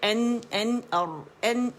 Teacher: नून का मखरज आप टच करें, एन एन और एन और, तो नून का जो मखरज है वो रा और जो दांतों का जो हमारी जो गम लाइन है, दाल ता का जहाँ मखरज है उसके दरमियान है, नरम, वो सख्त तालू मसूड़ों से अदा होता है, ठीक है।